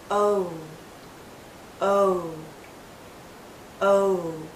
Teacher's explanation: even tighter it finishes actually with a slight o sound oh do you see how my lips start larger and then pull in to a tighter circle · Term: long vowel sound